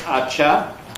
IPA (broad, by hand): ɑʧɑ